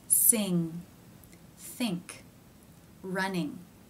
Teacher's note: the back of the tongue stretches up and touches the soft palate which is not raised in this sound · The tip of the tongue is down behind the bottom front teeth, while the back of the tongue stretches up and touches the soft palate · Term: nasal consonant, NG sound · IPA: ŋ